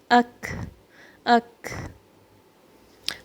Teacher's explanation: اس میں back of the tongue extra raise نہیں ہوگی, تفخیم کے لیے استعلا کے لیے ریز نہیں ہوگی, پھر تفخیم کریٹ نہیں ہوگی. ساؤنڈ کا ڈائریکشن نیچے کی طرف ہی ہے. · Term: کاف